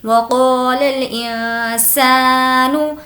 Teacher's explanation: اس وقت ہمیں نون کی آواز کو ناک میں چھپانا ہوتا ہے۔ اب یہاں پر نون ساکن ہے اور اس کے بعد سین ہے، سین جو کہ حرف اخفا میں سے ہے، اسی لیے یہاں پر اس کی آواز کو ناک میں چھپائیں گے۔